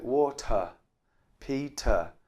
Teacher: So the ER at the end of this noun is often a schwa sound.